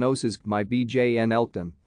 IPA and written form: oʊˈsɑːmə bɪn ˈlɑːdən (Osama bin Laden)